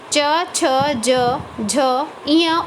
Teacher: जिन व्यंजनों के उच्चारण में जिह्वा का अग्रभाग आगे का भाग कठोर तालु को स्पर्श करता है वो तालव्य व्यंजन कहलाते हैं।